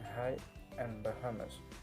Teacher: you're not actually constricting or blocking airflow for these sounds. You're just exhaling a little bit harder than you would for a normal vowel sound in transition to the following vowel sound.